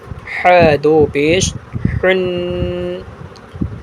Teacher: یہ ح کو حلق سے ادا کر کے پڑھیں گے